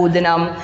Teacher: न के ऊपर अनुस्वार है तो म का उच्चारण आ रहा है